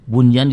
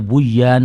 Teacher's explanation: kalau nanti bunyan dibaca Buyan nanti hilang asal asal usul dari huruf kalimat itu menjadi hilang nunnya hilang